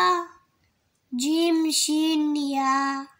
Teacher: জিহ্বার মধ্যখান তাল বরাবর উপরের তালুর সঙ্গে লাগাইয়া জিম শিন ইয়া